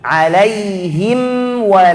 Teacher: ini namanya izhar syafawi kita harus baca huruf mim itu dengan cara yang jelas